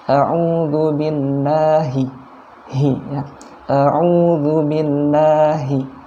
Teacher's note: ini yang h ini di pangkal tenggorokan